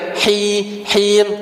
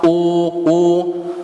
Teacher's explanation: Ketika u benar-benar u bibirnya kalau u memang monyong u, kalau fathah buka a, kalau i nyengir memang i bi him jangan ketika apa, ketika kasroh malah monyong him gitu, enggak apa bunyinya enggak pas. Kalau ketika kasroh harus nyengir him, ketika domah baru monyong u.